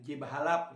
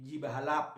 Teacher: fonem E itu ya menjadi fonem I misalnya ji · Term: pergeseran